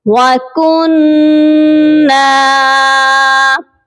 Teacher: کاف کو نون مشدد کے ساتھ ملائیں گے اور غنہ بھی کریں گے اور نون کو ایک الف کے برابر لمبا کر کے پڑھا جائے گا